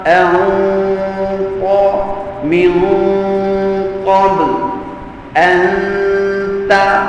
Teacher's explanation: Semuanya dengung bunyi pada bahagian atas rongga hidung. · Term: dengung ikhfa